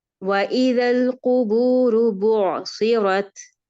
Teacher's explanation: یہ جو عین کی آواز ہے یہ اپنے حلق سے نہ رکتی ہے اور نہ چلتی ہے